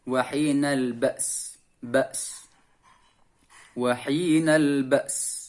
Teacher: matikan hamzah, kemudian bunyikan desisnya suara s